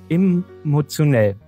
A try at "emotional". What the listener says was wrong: Da steht emotional, nicht emotionell.